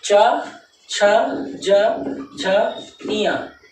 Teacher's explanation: अल्प प्राण के बाद महाप्राण फिर अल्पप्राण फिर महाप्राण फिर अल्पप्राण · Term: अल्पप्राण, महाप्राण